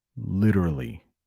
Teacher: that T, the way I say it, is actually like a D